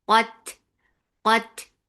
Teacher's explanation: Ta will get sifa of hums. And ta is light.